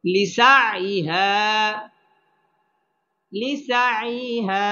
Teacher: এটা হচ্ছে জজম ওয়ালা হরফ লিসা আইহা হা আলিফ জবর হা জবরের বাম পাশে খালি আলিফ মদের হরফ এখানে এক আলিফ টেনে পড়তে হবে